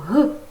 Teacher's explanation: звук г приголосний твердий дзвінкий